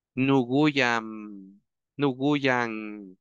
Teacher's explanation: En lugar de decir Guyam, porque no hay ninguna palabra en náhuatl que termine con M, le ponemos una N.